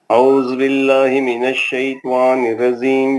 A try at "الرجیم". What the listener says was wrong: جیم اچھا پڑھیں, جیم زیم نہیں بولتے, جیم.